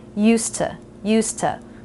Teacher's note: we don't actually need to try to make vide in used we can just drop that and go straight from the S sound to the T sound · But when we're connecting to the word to, which begins with an unvoiced consonant, we actually unvoice the S and the D. So rather than a Z sound, we just make it an S sound, used to.